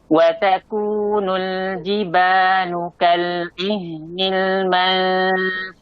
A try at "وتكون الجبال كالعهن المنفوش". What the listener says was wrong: Ihnil ainnya jelaskan dikit lagi.